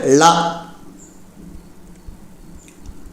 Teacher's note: நாவின் இரு பக்கங்கள் தடித்து மேல் பற்களின் அடியை தொடுவதால் தோன்றும் எழுத்து லா